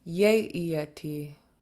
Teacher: Good saya iyate. So you see all three vowel sets in this word yeey are all low tone, so it should be yeey.